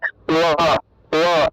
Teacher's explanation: যখন আপনি ঠোঁট না লাগিয়ে ব উচ্চারণ করবেন তখন উচ্চারণটা আসে ওয়া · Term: অন্তস্থ বয়ের উচ্চারণ